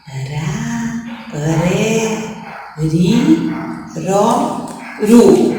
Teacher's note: O R com o som fraco ele treme no céu da boca.